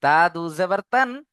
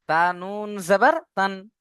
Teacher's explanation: তানবিন ও নুন সাকিনের আওয়াজ একই রকম